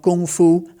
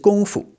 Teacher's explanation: Gong, not Kung. The Gong is pronounced in the first tone, so that's that high level tone, Gong, and then Fu is a neutral tone, okay, just Fu.